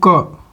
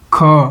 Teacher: जैसे कि कम स्वास आया। ख ज्यादा स्वास आया।